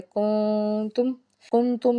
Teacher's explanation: میم جو ہے وہ ساکن ہے اور اس کے بعد آگے حمزہ آ رہا ہے، تو یہاں پہ اظہار شفوی ہوگا، غنہ نہیں کریں گے